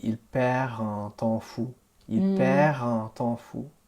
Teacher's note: You're not going to get the liaison with the D, S, or T when an R comes before it. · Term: enchaînement consonantique